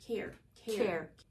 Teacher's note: care has just a short E sound, the same one as you have in egg. But it's R colored, so you're gonna say ear.